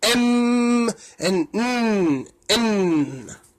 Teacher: the velum opens in the mouth, allowing air to escape from the nose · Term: nasals